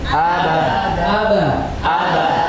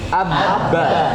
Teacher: tekanannya kuat pada huruf yang bertasdid karena dia menahan satu huruf ditahan. Jadi jangan terburu-buru.